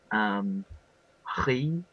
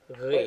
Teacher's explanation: It's the very soft fricative G sound. So ri. Wait.